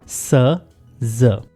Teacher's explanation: स और ज साउंड प्रोनाउंस करते हुए आपका front of tongue alveolar ridge के करीब आएगा और फ्रिक्शन से साउंड प्रोड्यूस होगी